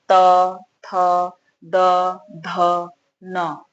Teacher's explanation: इसके बाद है त वर्ग। त वर्ग का उच्चारण आपका दांत से स्पर्श हो रहा है